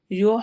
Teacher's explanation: یحببکم اللہ، یح، ہا کی آواز ٹھہرائیں گے حلق میں درمیان، ویسے بھی حلق کے درمیان سے ادا ہوتا ہے ہا